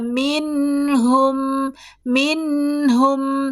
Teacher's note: Jadi berarti minhum adalah di ujung kalimat. Ketika mim di ujung kalimat berarti dia adalah dibaca tetap ada jejak dengung. Ada dengung walaupun kurang ya.